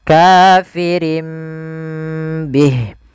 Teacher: Yang pertama dengan itbq, yang kedua dengan sufada furjah. Tapi kita mengambil yang itbaq saja yaitu bibir kita tertutup dengan rapat.